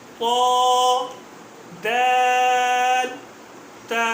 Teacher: مخرج نمبر 12، زبان کی نوک اور ثنایا علیہ کی جڑیں۔ زبان کی نوک اور ثنایا علیہ کی جڑیں، اس سے 3 حروف ادا ہوتے ہیں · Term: نطعیہ